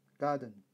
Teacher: The accent is on the first syllable